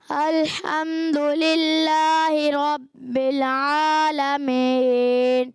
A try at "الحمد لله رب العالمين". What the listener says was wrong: بل، یہ جو بل ہو رہا ہے نا، یہ بل نہیں ہونا چاہیے. ال کا بھی لام ہلنا نہیں چاہیے. الحمد للہ رب العالمین.